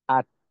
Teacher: আমার জিহ্বাটা গিয়ে সামনের উপরে দাঁতের গোড়ায় আটকাইলো। এইটা হলো তায়ের মাখরাজ।